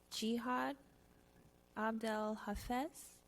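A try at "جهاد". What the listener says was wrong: Egyptian, so we pronounce it as Gihad.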